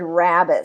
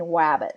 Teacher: substituting the R with a W sound, so saying wabbit. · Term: gliding